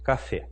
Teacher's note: a última sílaba que é a forte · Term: sílaba tônica